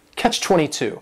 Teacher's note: 22 is three syllables, and the stress is on that final syllable